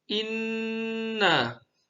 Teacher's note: Guna terdapat pada kata inna, dibaca dengung dengan menahan inna